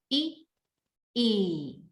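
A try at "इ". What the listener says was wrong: Now, when you're doing the short, it's very short. It's like E. Try again.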